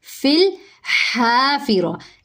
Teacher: हा हलक से अदा होगा, सांस जारी करेंगे, एक अलिफ के बराबर लंबा करेंगे क्योंकि आगे अलिफ मद्दा हो रहा है।